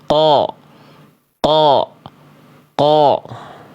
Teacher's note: Qo qo tapi cukup diangkat cukup diangkat saja ee apa ee pangkal lidah mulutnya buka qo qo bukan qo ya lalu qof enggak boleh keluar percikan nafas · Qaf itu nggak keluar nafas. Ko. Ya, kalau dia qaf keluar nafas jadinya huruf kaf nanti. · Jadi kayak huruf kaf, ada percikan nafasnya. Qaf tidak punya sifat hams. Qaf sifatnya jahar. Jahar itu dia tertahan nafasnya, sama kayak huruf zai.